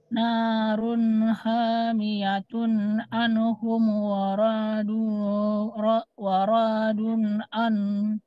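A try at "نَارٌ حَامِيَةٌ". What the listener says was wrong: Hati-hati di sini ro-nya Bu tetap pendek ya. Waradu an.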